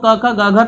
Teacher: तो ये जो बोले जाते हैं वो कंठ से बोले जाते हैं, तो इनका बोलने का उच्चारण स्थान कंठ होगा। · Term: क वर्ग